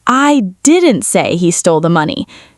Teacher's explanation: let's stress the second word, didn't. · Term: strong denial